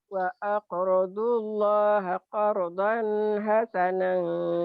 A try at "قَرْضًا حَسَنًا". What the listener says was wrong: Qardan hasanah. Wa aqradu diulang. Nah, udah bagus cuman mulutnya tidak agak oo-nya kurang di sini nih.